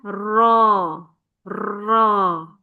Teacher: Ro dia memiliki sifat inhiraf. Apa maksudnya? Ya, melenceng atau menyimpang anginnya tidak lurus keluar. dari rongga mulut kemudian keluar ya sampai keluar itu tidak lurus tapi ro lidahnya seperti apa ya.